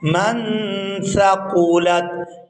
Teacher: حروف اخفا میں سے ہے تو یہاں پر اخفا ہوگا، اور اخفا کی جو آواز ہے وہ ناک سے ادا ہوگی، یعنی ناک میں نون کی آواز کو چھپائیں گے اور اس کو چھپانے کی جو مقدار ہے وہ 1 الف